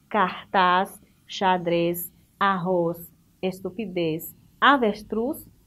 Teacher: Oxítonas, tendo a última sílaba como a sílaba tônica, ou seja, aquela sílaba mais forte